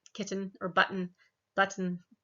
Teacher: depending on your dialect you might have more of a flap and say kitten or button